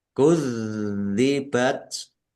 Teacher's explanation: zalnya ada tasdidnya, dibaca double, ditekan. Kudzibat, ditekan dan ditahan.